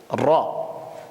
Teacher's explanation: Et ici ça sort de ce qu'on appelle ra'sul lisan, sous le point d'articulation du nun, s'appuyant contre la muqueuse palatine en faisant vibrer le dos de la langue, formant le point d'articulation du ra